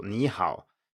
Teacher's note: would be two third tones in a row so knee how you have to go up on the first syllable